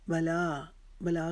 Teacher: بلا کو ہم نے ایک الف کے جتنا لمبا کھینچنا ہے